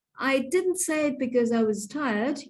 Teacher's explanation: You can see that tired has this lovely full rise, beautifully performed.